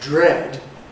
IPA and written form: dɹ̝ed (dread)